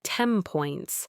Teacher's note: the N sound in 10 takes on the quality of the P sound in points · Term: assimilation